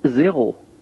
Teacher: The number zéro has what we call an aspirated R. And an aspirated R simply means that it's an R in which we feel air passing through the throat